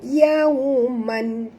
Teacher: ya dengan waw ni dua-duanya adalah huruf lin, lembut. Jadi kita baca pun lembut.